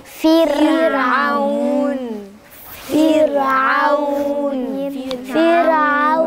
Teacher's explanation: ساكنة في وسط الكلمة وقبلها حرف مكسور، حرفها قبلها حرف مكسور، هتبقى مرققة